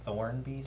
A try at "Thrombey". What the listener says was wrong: Thornbys with an M.